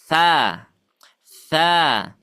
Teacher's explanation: Fa'aktharu, huruf tha ini dia sama dengan huruf zal, sama dengan huruf dho. Ujung lidahnya ke ujung gigi sari.